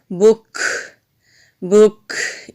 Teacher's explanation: تو کاف ساکن ہے تو یہاں پر ہم ہمس کریں گے، ہمس کہتے ہیں بک، بک، یہ جو اینڈ میں آواز آ رہی ہے اس کو ہمس کہتے ہیں، یعنی کہ سانس جاری رہتی ہے